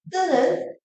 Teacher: 뜨는 된 소리로 성대 근육이 긴장되면서 나는 소리이기 때문에 강하고 단단한 느낌을 줍니다